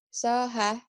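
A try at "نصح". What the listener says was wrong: Dosoha itu bukan toh itu na.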